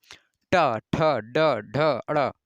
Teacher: झटके से जीभ बाहर आती है वो भी रगड़ाहट के साथ, तो मूर्धा रहता है।